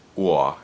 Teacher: in New York, aw is pronounced uah, and that oo at the beginning is a high vocoid.